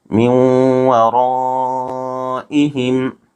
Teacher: نون ساکن کے بعد دوسرے کلمے میں حروف یرملون میں سے واو آ رہا ہے، اس لیے یہاں ادغام مع الغنہ ہوگا، اس کو غنہ کے ساتھ ادا کریں گے